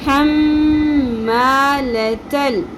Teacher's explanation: لام ساکن تا کے ساتھ جڑ جائے گا زبر کے ساتھ اور الف بیچ میں سے سائلنٹ ہو جائے گا